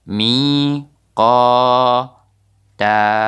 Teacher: bukan tan tapi ta, kita panjangkan 2 harakat. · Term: mad iwad